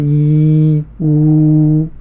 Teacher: होठों से हम उसे गोलाकार करते हैं तो ऊ हो जाएगा · थोड़ा जीभ को ऊपर ले जाएंगे तो ई हो जाएगा